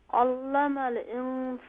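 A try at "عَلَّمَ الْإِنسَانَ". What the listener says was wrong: यहाँ पर लाम जो है लाइट होगी, अल्लमल। अल्लमल, यहाँ लाम को फुल माउथ ना करें बल्कि लाम को लाइट कीजिए। अल्लमल।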